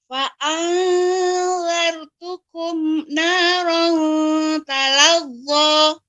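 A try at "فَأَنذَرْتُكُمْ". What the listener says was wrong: Ya, masih untuk kumnya ada berhenti ya, ada ini Ibu. Jadi jangan sampai berhenti. Namun dia kalaupun ada jeda yang tidak sampai berjeda seperti saktah.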